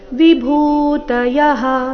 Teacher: ಭೂ ಇಲ್ಲಿ ಮಹಾಪ್ರಾಣ ದೀರ್ಘ